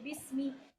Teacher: با کو با کے مخرج سے پڑھیں گے, سین کی سیٹی کو واضح کریں گے, میم کی زیر کو لمبا نہیں کریں گے